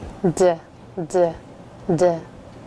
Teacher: when you make the d sound, you'll feel a light vibration in your vocal folds